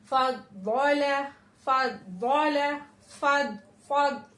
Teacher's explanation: जबान की करवट को हमें अपने पांच दाढ़ों से टच करना है